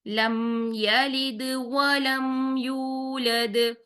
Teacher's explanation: اگر ہم یہاں پر اس کو یولد پڑھ دیتے ہیں تو یہاں پر واو مدہ ڈراپ ہو رہا ہے، جو کہ ہماری غلطی ہوگی، تو ہم یہاں پر واو مدہ کو 2 کاؤنٹس ہی پڑھیں گے، 2 کاؤنٹس سے کم نہیں کریں گے